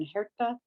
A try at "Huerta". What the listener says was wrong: the H is silent, but it's Huerta.